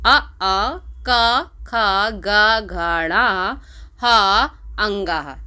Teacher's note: ये आते हैं कंठ के अंतर्गत, यानी कि कंठ से बोले जाने वाले वर्ण है।